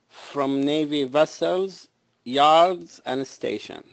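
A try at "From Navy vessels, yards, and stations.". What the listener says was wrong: Yeah, get that S.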